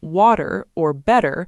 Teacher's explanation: In casual speech, the T sound in the middle of a word, like in water or better, often sounds more like a quick D sound. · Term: flap T